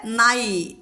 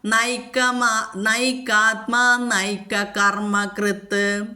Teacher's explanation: നൈ ന എന്നുള്ളത് ദന്ത്യമായിട്ട് പല്ലുമ്മേ നാവ് വന്നു മുട്ടിയിട്ട് ഉച്ചരിക്കണം